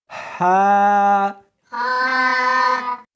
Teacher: اس کو حلق میں سے نکالنا ہے اور ساتھ میں ہوا بھی ہونی چاہیے، ہا۔ ہا نہیں پڑھنی بلکہ اس کو حلق میں سے نکالنا ہے، سینے میں سے نہیں نکالنا، ہا۔